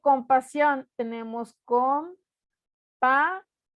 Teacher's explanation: el acento ortográfico o implícito va en la última sílaba, y cuando lo quiero acentuar de forma ortográfica, que es escribir esta tilde en las vocales, se hace o se realiza cuando la palabra termina en NS o vocal. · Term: aguda